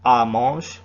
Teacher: the word for elle is usually just pronounced a